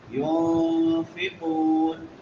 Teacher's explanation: نون ساکن ہے اور بعد میں حروف اخفاء میں سے فا ہے تو یہاں پہ اخفاء کریں گے